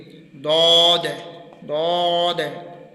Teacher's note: ये ऊपर वाली दांतों की जड़ से जब हमारी ज़बान का किनारा लगेगा तो फिर दौद को हम सही तरीके से अदा कर सकेंगे। और दौद को जब हम अदा करेंगे तो हमारी ज़बान भी आगे की तरफ आएगी और फिर जाके दौद को हम सही तरीके से अदा कर सकेंगे।